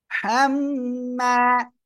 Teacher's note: হরকতের বামে মিমে তাসদিদ ওয়াজিব গুন্না হবে